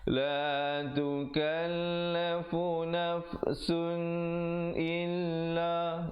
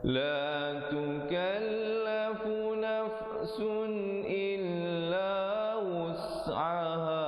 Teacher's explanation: Izhar halqi, sunnya itu bunyi saja sun, jangan panjang, jangan dengung, terus masuk illa wus'aha